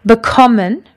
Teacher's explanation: Bekommen has got its emphasis on the second syllable.